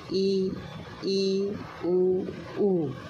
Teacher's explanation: संवृत, जिन स्वरों के उच्चारण में मुख सबसे कम खुलता है